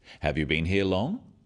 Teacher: yes no questions so they have a rising tone